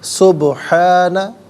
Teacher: سبحانہ میں با ساکن ہے، لیکن یہاں پر قلقلہ کیا جائے گا کیونکہ یہ حرف قلقلہ ہے، آواز لوٹتی بھی محسوس ہونی چاہیے